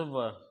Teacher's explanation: दंत्योष्ठ ऊपर के दांत और निचला होठ दोनों का इस्तेमाल हो, जैसे व केवल एक ही है व, दंत्योष्ठ।